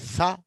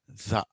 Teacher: స అనేది వాయిస్లెస్, జ అనేది వాయిస్డ్